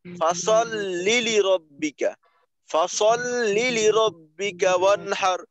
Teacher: দ্রুত প্রথম লামটাকে শেষের লামের সাথে মিলিয়ে দিলাম